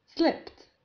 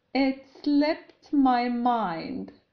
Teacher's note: هذا الفعل ينطق slip، وفي زمن الماضي البسيط أي the simple past نضيف في نهايته حرف P ثانية ثم ED، و ED هنا لا ننطقهما د بل ت، ليس slipped بل slipped، لأن قبل ED يوجد حرف P، وحرف P يسمى unvoiced consonant أي حين ننطقه لا تهتز الحبال الصوتية في الحلق، فبالتالي حرف P يجعلنا ننطق هنا ت slipped.